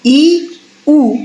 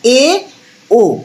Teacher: ই উ দেখ মুখের ফাঁক সবচেয়ে কম থাকছে, তারপরে ওর থেকে দেখ একটু বেশি থাকছে এ ও